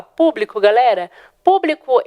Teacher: eu vou ter a acentuação na antepenúltima sílaba, né? A antepenúltima sílaba é a sílaba tônica. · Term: proparoxítona